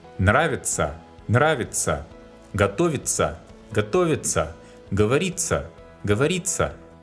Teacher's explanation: The groups тся and тися, which you can see in reflexive verbs, are pronounced like unstressed ца.